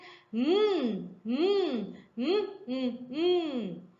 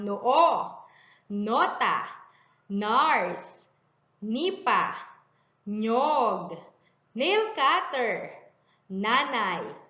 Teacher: Upang magawa ang tunog nito, ilagay ang dulo ng dila sa likod ng harapang ngipin at patunogin ang bibig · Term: tunog ng letrang N